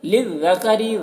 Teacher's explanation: ذال کو باریک پڑھنا ہے، کاف کو بھی باریک پڑھنا ہے، را کو بھی باریک پڑھنا ہے